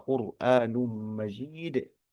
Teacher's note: huruf ro sukunnya tebal karena pengaruh dari domah huruf qof